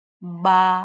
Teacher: बा दो होठों को मिलाएं तो फिर अदा होता है। बा है ना?